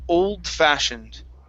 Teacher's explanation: we're gonna push the d into the f